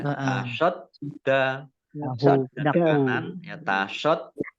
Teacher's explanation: Dalnya dibaca double ada tasdidnya ya, tasadda kanan ya tasaddaku. Domah bertemu dengan huruf wawu bacaan mat tobi'i panjang 2 harokat